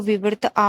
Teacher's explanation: विवृत जो है उसमें तुम्हारा पूरा मुंह खुल रहा है आ।